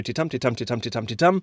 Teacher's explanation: a foot, two syllables that go unstressed stressed